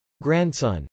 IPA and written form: grˈænds.ʌn (grandson)